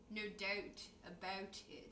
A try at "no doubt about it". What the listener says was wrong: Doubt. Don't put the T in there.